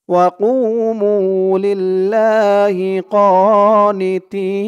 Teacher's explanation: তি তি বলে তিন আলিফ টান দিয়ে এই নুনকে ধরবে, নুনের উপরে জবরটা সাকিন হয়ে যাবে। এই তিন আলিফ টানের নাম হচ্ছে মদ্দে আরজি।